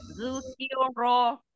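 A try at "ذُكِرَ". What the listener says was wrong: jangan zuqi, tapi zukiro. Ki. Zukiro. Iya, tipiskan kafnya.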